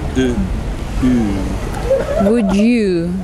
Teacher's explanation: the tongue pulls further back and the lips push out further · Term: long vowel ooh